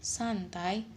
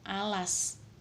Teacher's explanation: Yang terakhir, pada kata bunyi S atau as memiliki dua realisasi yang berbeda, yaitu antara santai dan alas, di mana pada kata santai bunyi s tidak terlalu mendesis, sedangkan pada kata alas suara desis terdengar lebih jelas.